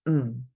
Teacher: not to be is going to be your negative M and that's your low falling fourth tone